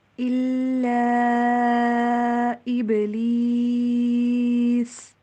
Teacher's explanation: کیونکہ یا کے اوپر بھی جزم آ رہی ہے اور سین کے اوپر بھی وقف کے دوران جزم آ جائے گی، 2 جزمیں ساتھ آئیں گی، ہم نے اس کو مد کی طرح لمبا کر کے پڑھنا ہے